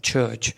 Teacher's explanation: this affricate is composed of t and sh sound, and that represents the ch sound, right? Like for example, you have the t sound of the tip, so you just put that t phoneme in front of it, and then like the transcription of the ship, so the sh sound transcription, that is a kind of a symbol, right? · the plosive is followed immediately by a fricative noise so since phonetically this affricate is composed of t and sho